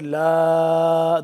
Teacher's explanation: اللہ، لا لفظ اللہ پر پڑھیں گے، لام الف زبر لا، لام الف مد زبر لا، 2 سے 3 الف کے برابر، اس کو ہم لمبا کریں گے